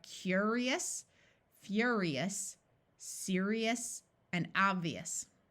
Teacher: OU usually has the sound ow, but when it's in a suffix, it takes on more of a short U sound. So this whole suffix is eus.